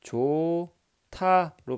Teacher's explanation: 히읗과 디귿이 만나니까 티읕으로 합체가 됐다라는 얘기잖아요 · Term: 축약